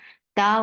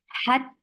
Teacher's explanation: Ta will be shadid here. There is no flow of sound. Hat, the sound will cut off, and ta will be 2 counts long.